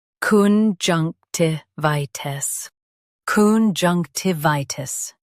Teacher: junk ti vi tis conjunctivitis junk ti vi tis conjunctivitis Stress junk and keep vi clear. The t is soft.